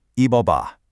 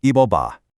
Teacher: See how that P sound just slides right into the next syllable? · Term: linking sound